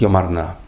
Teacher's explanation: А типичным для классического языка являлось ударение именно на этой частице «на» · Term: акцентное смещение